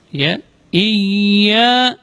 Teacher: Iyyaka na'budu wa iyyaka nasta'in. Di sini huruf ya juga keluar dari tengah-tengah lidah